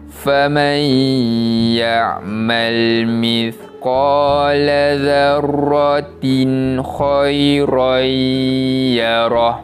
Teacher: Di situlah bacaan izhar kholqi yang perlu dibaca dengan bacaan jelas bunyi bacaan tanwin tersebut tanpa dengung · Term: izhar halqi